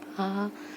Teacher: विव्रत स्वर मतलब जब हम आ बोलते हैं तो हमारा मुख जो है वो अधिक खुला रहता है